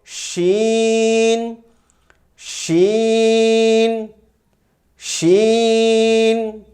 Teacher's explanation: شین کا مخرج زبان کا درمیانی حصہ اور درمیانی تالو سے لگے گا نہیں، بلکہ تھوڑے سے گیپ کو مد نظر رکھتے ہوئے وہاں سے یہ آواز پیدا ہوتی ہے